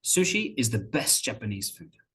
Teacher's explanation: if you listen carefully, you can hear the t sound has been elided.